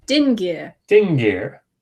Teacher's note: Notice that you hear the ng in the middle because you have that nasalized g